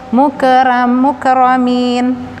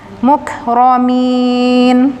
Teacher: Ka-nya ketika sukun hanya ada nafasnya, bukan mantul, bukan mukramin, hanya nafas mukramin.